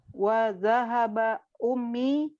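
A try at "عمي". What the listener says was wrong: Ammi. Ayo, bukan ummi tapi ammi. ammi. Kalau ummi itu nanti pakai hamzah. Ummi, ya. Ummi ibu saya. Ya, kalau ini ammi.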